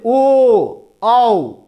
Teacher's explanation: आपका जो मुख है वो गोल आकृति का हो रहा है, वृत्त के समान हो रहा है। तो इस आधार पर उसको वृत्ताकार स्वर की श्रेणी में रखते हैं।